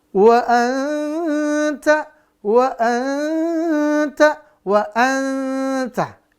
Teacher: Samarkan bunyi nun sukun atau tanwin. Ya, setelah itu jangan lupa ditambah dengung dengan sifat yang dominan, tipis untuk ta. Dan masuk ke makhraj huruf ta. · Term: ikhfa